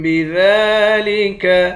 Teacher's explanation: ذال پر کھڑا زبر ہے، ایک الف کے مقدار کھینچیں گے